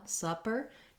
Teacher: in supper, supper, you have the vowel schwa, the stress schwa. So it's held long